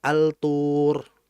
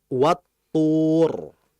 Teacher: Langsung ke to-nya. Karena lamnya itu nggak kebaca disebabkan idgham. Langsung dimasukkan pada huruf setelah lamnya. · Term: idgham asy-syamsiyah